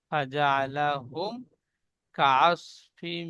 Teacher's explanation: এখানে ফাজা আলা হুম বলে গুণনা করছেন, মিম সাকিনের পরে বা মিম ছাড়া অন্য অক্ষর কাফ এসেছে, তাই মিমকে বিনা গুণনা পড়তে হবে, একে ইজাহারের স্বাভাবিক বলে।